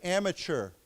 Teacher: So, when we say this this word here, the T has a ch sound, like a ch sound.